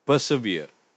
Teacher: >> For pronunciation, it's persevere. Three syllables with the stress on the last syllable.